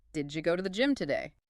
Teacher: The D in did and the Y in you collapse into that D-sha sound. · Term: didja